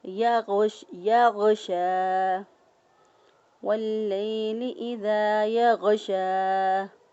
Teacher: شین کھڑی زبر شا، ایک الف کے برابر اس کو یہاں پر لمبا کیا اور لمبا کرتے ہوئے ادا کیا۔